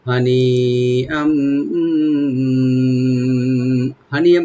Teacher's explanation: তানবিনের পরে যেহেতু মিম আসছে ইদগাম উইথ গুন্না হবে।